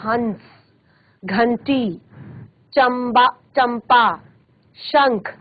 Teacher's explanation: तो प्रश्वास वायु जो होती है वो नाक से बाहर निकलती है